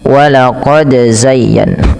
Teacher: Pada lafal walaqad, pantulkan huruf dal ketika huruf dal tersebut sukun dan di sini diwarnai dengan biru, yang artinya harus dibaca dengan bacaan qalqalah ya teman-teman.